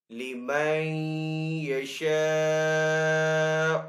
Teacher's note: مد متصل کو 3 سے 4 سیکنڈ کھینچ کر ادا کریں گے